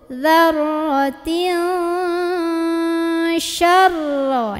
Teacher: Nah, ini juga sama, jangan syaro ya roh ya, shinnya jangan dipanjangin, shin pendek tekan ke ro. Syarai, di sini tahan, syarai ya roh.